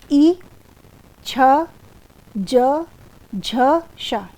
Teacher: इ च वर्ग तथा श का उच्चारण तालू से होता है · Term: तालव्य व्यंजन